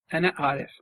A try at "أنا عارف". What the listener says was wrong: I really want to see you pronouncing that ein like it's nothing. I want you trying it like it's nothing, because you are kind of making two options.